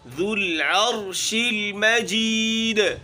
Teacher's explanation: ذو ذال ہے باریک ہے اور ہونٹوں کو گول کرنا ہے · پھر آخر میں دال ہے اور ساکن ہے، یہاں قلقلہ ہوگا